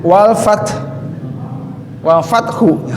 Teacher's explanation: gigi seri atas bertemu dengan bibir bawah